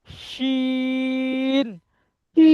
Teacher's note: জিভের মাঝখান উপরে তালুর সাথে লাগান